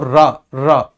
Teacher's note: रा के उच्चारण में सर कंपन होता है जिव्या में। इसीलिए इसे प्रकंपी भी कहते हैं।